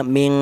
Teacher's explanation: ming panjangnya dengung dua harakat · cara bacanya ng ya, ming panjangnya dengung 2 harokat, ming. Kemudian ming qablu, qab. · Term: ikhfa